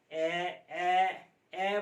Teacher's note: ए बोलेंगे तो भी आधा खुला है